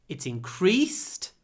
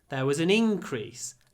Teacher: Increased stresses on the E when it's a verb. Increase stresses on the I when it's a noun.